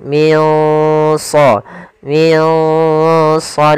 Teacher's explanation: warna hijau yaitu berdadakan dia bacaan Ikhfa pula cara membacanya adalah kita samarkan nunnya ke huruf Shad nah Shad termasuk huruf yang tebal dan huruf Istia maka dia samarkannya agak ditebalkan